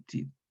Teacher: Estas, TS, DS, son africadas. La primera es sorda. Claro, porque hay una T, suena una T primero, la T es sorda.